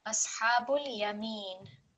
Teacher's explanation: Let's make it a tiny bit longer because we have ya madda